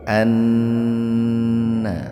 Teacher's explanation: nun bertasdid itu adalah gunah mendengung tahan dua ketukan